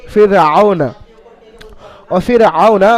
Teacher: আর রকে বারিক পড়তে হবে, অর্থাৎ মুখকে চওড়া, মুখটা চওড়া করে পড়তে হবে। বারিক, পুর হলো মুখ গোল, আর বারিক হলো মুখটা চওড়াভাবে পড়তে হবে।